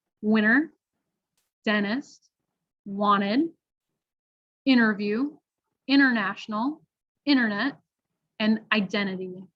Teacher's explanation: native speakers might say it very quickly and omit the T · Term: drop the T's